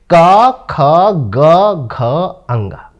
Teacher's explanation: देखो सबसे पहले जब हम प्रयत्न करते हैं ना तो स्पर्श करते हैं। कैसे, ये ध्वनि हमारे कंठ से निकल रही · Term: स्पर्श व्यंजन